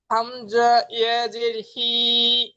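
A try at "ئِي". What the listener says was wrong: হামজা ইয়াজের হি বললেন, তো হামজার আওয়াজ নিচের দিকে যায়, হামজা ই হয়। হামজা জের ই, তো হামজা ইয়াজের ই।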